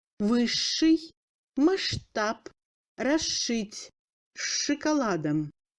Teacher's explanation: SH se prononce comme Ш long